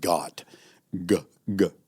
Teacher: the g sound is formed in the back of the throat right so your tongue if you think about your tongue as